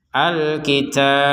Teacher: Alkitab huruf ba-nya kita pantulkan kenapa karena kita berhenti di huruf banya ini · Huruf ba-nya kita pantulkan. Kenapa? Karena kita berhenti di huruf ba-nya ini, sehingga harokat huruf ba-nya sudah tidak terbaca. Dan harokat ba ini sudah tergantikan dengan sukun. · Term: dipantulkan